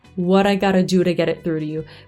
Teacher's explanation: Perché la parola to, per esempio, a volte si dice t, a volte in questo caso per esempio si dice r. What I gotta do, r, get it through to you.